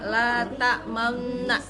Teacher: Ismam itu artinya menggabungkan dua bibir seperti mengucapkan wawu ketika membaca la ta'manna.